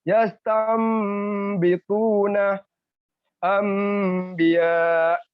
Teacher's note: merubah bunyi nun mati atau tanwin menjadi seperti huruf mem mati